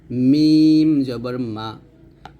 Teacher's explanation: মিমটা হবে দুই ঠোঁটের শুকনো অংশ থেকে